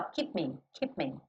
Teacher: o P é lábio com lábio, o M é lábio com lábio